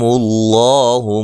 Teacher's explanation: لفظ اللہ کو موٹا ادا کرنا، اس سے پہلے پیش ہے